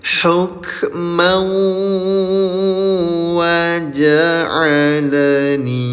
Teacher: leburkan bunyi tanwinnya ke huruf wau disertai dengung selama dua harakat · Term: idgham bi gunah